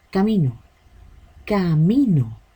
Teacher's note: La voz carga en mí. La sílaba átona es donde no se carga la voz en una palabra. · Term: sílaba tónica